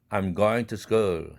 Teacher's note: 그래서 going과 to school 사이에는 멈춤이 있어요. 아주 짧지만 아주 짧은 멈춤이 생기므로 동화 현상이 일어나지 않습니다.